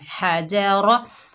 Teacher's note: रा के ऊपर ज़बर है, पुर पड़ी जाएगी।